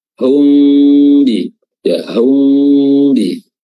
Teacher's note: tadi dengan ee Ikhfa Syafawi ya Ikhfa Syafawi ee di mana mimnya ini diikhfakan disamar-samarkan karena bertemu dengan huruf ba